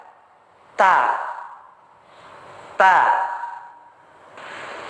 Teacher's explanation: Huruf ta tempatnya punggung ujung lidah bertemu dengan papan gigi seri atas bagian dalam.